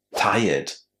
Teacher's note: The reason why we don't say tired, but tired, is that tire is basically a verb, and when you attach the ed ending to it, and you make an adjective out of it, you don't add any extra syllable to that ending. You simply say tire and add the d.